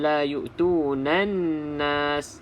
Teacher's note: kita abaikan lam. Terus masuk dalam huruf nun. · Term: alif lam syamsiyah